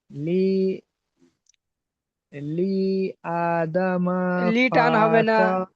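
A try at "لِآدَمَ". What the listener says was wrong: লি টান হবে না, লি টান হবে না, লি আ হামজাটা টান হবে।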